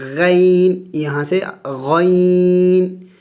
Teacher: غین یا زبر غی، یہ بھی حروف لین میں سے ہے اس لیے کہ یا ساکن سے پہلے زبر ہے۔ غین بھی موٹے حروف میں سے ہے اور حروف حلقے میں سے ہے، اور حلق کے اگلے حصے غین، یہاں سے غین، تو یہاں پہ غین یا زبر غی، حروف لین ہے، جلد پڑھیں گے۔